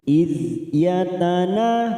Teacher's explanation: Iz ada huruf dzal sukun, hati-hati jangan dipantulkan karena bukan qalqalah, maka kita tahan. Iz yatana, yatana yang panjang adalah huruf nun karena ada fathah diikuti alif, 2 harokat kita panjangkan.